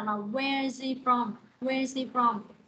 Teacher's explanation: chữ hi và chữ hơ khi mà nối âm á, chữ h nó sẽ câm luôn bạn, nó sẽ không đọc chữ h